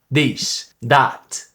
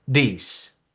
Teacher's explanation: And voiced TH sounds like this or that becomes a more d sound.